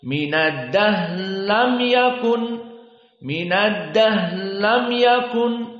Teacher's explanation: Ra-nya diidghamkan kepada lam. Minad dahri lam jadi minad dahlam yakun.